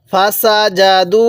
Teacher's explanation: তাহলে দালের মধ্যে তিন আলিফ টান দিব কারণ মদের হরফের উপর এরকম চিকন চিহ্ন এরপরে লম্বা হামজা থাকলে